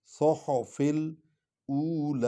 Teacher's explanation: لام کو لمبا کرنا ہے کہ اس پر کھڑا زبر ہے۔ او الف پیش وا، او، لام کھڑی زبر لا۔